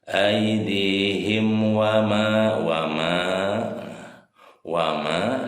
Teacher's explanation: Hukum tajwidnya adalah izhar sapawi. Jadi mimnya dibaca jelas ya. Aidihim wama nih mim berharokat fathah ketemu alif mad tabi'i ya, panjangnya 2 harokat.